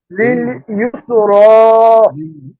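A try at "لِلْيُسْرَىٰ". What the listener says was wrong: হ্যাঁ, লিল ইউসরা। মাশাআল্লাহ সুন্দর হয়েছে।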